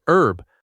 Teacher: In American English, herb often drops the H sound completely and sounds like herb.